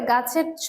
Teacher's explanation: ছ টি হচ্ছে অঘোষ মহাপ্রাণ ধ্বনি